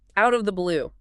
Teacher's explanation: Link it all together. Out of the blue. It sounds like one long word.